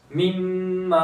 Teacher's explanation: मीम मुशद्ददा है, गुन्ना करेंगे और अलिफ मद्दा भी हो रहा है